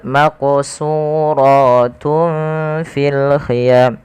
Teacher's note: Maq di sini harus kita pantulkan pada lafal membaca huruf qof yang dia sukun. Karena ia ada kita namakan dengan bacaan qalqalah.